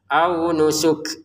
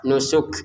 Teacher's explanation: Nusuk untuk kafnya ada pantulan, mohon maaf bukan pantulannya tapi keluarnya nafas sedikit saja. Au nusuk, ada nafas keluar.